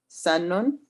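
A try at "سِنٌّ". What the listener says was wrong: With a kasra, the sin has a kasra. Sinnun.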